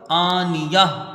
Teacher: آنیہ، تائے مدورہ ہا ساکنہ سے بدل جائے گی، وقف بالابدال ہوگا، مد کوئی نہیں بنے گا. حمزہ میں کھڑا زبر ہے، 1 الف کی مقدار اس کی رکھیں گے، 1 الف کے برابر کھینچ کے پڑھیں گے. نون کے نیچے زیر ہے، اس کو جلدی پڑھا جائے گا، یا کو یہاں ہا سے ملا دیا جائے گا، آنیہ.